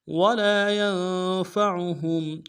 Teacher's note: نون سے ادا کریں گے، عین کو موٹا ادا کریں گے، ہا کو میم ساکن کے ساتھ ملانا ہے، میم ساکن میں غنہ ادا کریں گے